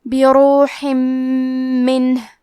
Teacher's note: کلمت بروح میں حرف را پہ پیش ہے تو ہمیں پیش کو ظاہر کرنا ہے اور حرف را کو موٹی آواز میں پڑھیں گے. آخری میں ہا کے نیچے تنوین زیر ہے، پھر حرف المیم آتا ہے. · میم حروف الادغام بغنہ میں سے ہے تو ہم تنوین کو میم میں ملا کے غنہ اور تشدید کے ساتھ یہ حکم کو ادا کریں گے